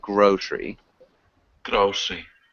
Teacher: we emphasize the first syllable so it sounds like grocery